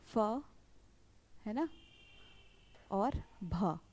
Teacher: जिन व्यंजनों के उच्चारण में मुख से अधिक हवा निकलती है, महाप्राण कहलाते हैं। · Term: महाप्राण व्यंजन